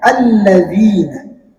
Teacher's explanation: Kata selanjutnya alladzina lagi-lagi di sini ada ya sukun sebelumnya ada huruf dal yang berbaris kasrah maka dibaca dua harakat hukumnya adalah mad th'i.